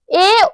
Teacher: কন্ঠ থেকেও আসছে আবার তালুকে স্পর্শ করছে তাই একে বলা হচ্ছে কন্ঠতালব্য দেখ কন্ঠ তালুর সাহায্য নিয়ে উচ্চারিত